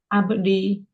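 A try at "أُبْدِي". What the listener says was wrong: tiadakan huruf akhirnya. Itu bukan ya. Hamzah. pakai hamzah. Harokat akhirnya hamzah dengan sukun ya, abdi.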